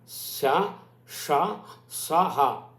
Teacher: ఊష్మలు ఉంటాయి, ఊది పలకబడేవి, ఈ మహాప్రాణవర్ణాలు శ ష స హ, వీటికి వివృత ప్రయత్నం, నోరు బాగా విచ్చుకుంటే కానీ రావు